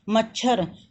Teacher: च को बोलते समय हवा कम निकली थी हमारे मुंह से, तो यह अल्प प्राण है, और छ को बोलते समय हवा ज़्यादा निकली थी तो यह महाप्राण है।